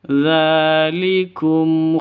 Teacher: dza panjang dua ketukan karena ada tanda berdiri di atasnya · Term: mad asli